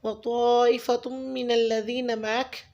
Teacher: व तौइफ़तुम मिनल्लज़ीन मअक, यहाँ पे तौइफ़ा की जो मद है उसको आपने 4 to 5 फिंगर्स काउंट करना है, और उसके बाद ता की पेश तनवीन को मीम मुशद्दिद से मिलाना है, वहाँ पे भी आपने गुन्ना करना है।